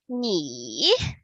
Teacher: third tone is the sound that we often say. You go high, you go low, and you go high. So the complete sound sounds like 你, that long.